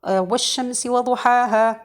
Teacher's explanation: And this is not for sure the correct thing, but the alif mad is just produced from this spacing, as I told you, between the mouth and the throat. So no hamza at the end of the mad with the alif.